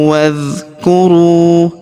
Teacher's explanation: huruf ru kita panjangkan dua harakat karena wau sukun di depannya alifnya tidak dibaca.